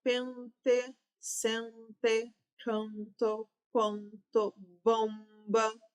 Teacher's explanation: Estas palavras possuem dígrafos vocálicos, porque a consoante N e M não estão com seus sons consonantais, estão com sons nasais, sendo projetados para a letra anterior, né, que é a vogal E, a vogal A, a vogal O e assim por diante.